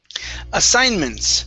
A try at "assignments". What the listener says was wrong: Try that, assignments. Okay, give me an S at the very end.